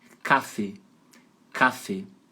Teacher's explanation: E o final é fechado, não é aberto, é E.